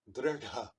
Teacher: This is retroflex and aspirated.